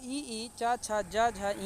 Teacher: ई, चा, छा, जा, झा, इया आदि का उच्चारण जो है वो तालव्य से होता है।